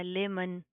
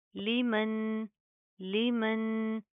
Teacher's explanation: लाम ज़ेर ली होता है, इसको आपने ले नहीं पढ़ना